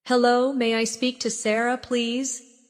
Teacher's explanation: Notice how may I sounds like maya in fast speech.